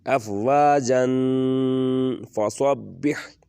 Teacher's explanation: جن تھوڑا سا لمبا کر کے پڑھیں گے تو نون کی آواز غنہ میں بدل جائے گی